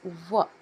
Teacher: ದಂತ ಮತ್ತು ತುಟಿಗಳ ಸಹಾಯದಿಂದ ಉಚ್ಚಾರವಾಗುವಂಥ ಅಕ್ಷರಗಳು